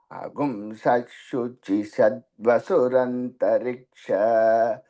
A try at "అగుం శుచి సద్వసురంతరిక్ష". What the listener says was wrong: మీరు చెబుతారు స్పష్టంగానే ఉంది కానండి, అది షకారంగా వినపడలేదు నాకు, అది షకారంగా వినపడుతున్నది.